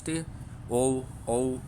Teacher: थोड़ा जी पीछे की तरफ भी जाती है कंठष् ओ ओ कंठोष्ठी मतलब जो ओष्ठ भी होते हैं और कंठ से भी आते हैं